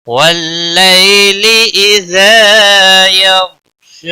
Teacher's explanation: یو غین کو ہلانا نہیں، غین موٹا پڑا جائے گا۔ شا کے اوپر کھڑی زبر ہے، 1 الف کے برابر کھینچ کر پڑھیں گے۔ وقف کی صورت میں بھی 1 الف کے برابر ہی وقف کی صورت میں کھینچ کر پڑھیں گے۔